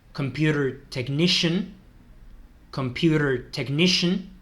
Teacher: veis que la C final esa con el ian no se pronuncia como tal, es como un shun, computer technician, computer technician.